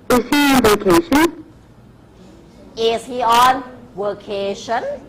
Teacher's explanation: ท้ายประโยคเขามีกฎอยู่เลยว่าจะต้องเป็น▁rising▁intonation